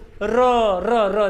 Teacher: देखो र बोल कर देखो, जो दांत की जो जड़ है वहां जा रहा है र, और यानी कि दंतमूल पर जा रहा है।